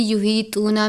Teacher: یہ باریک ہا ہے، حلق سے ادا کرتے ہیں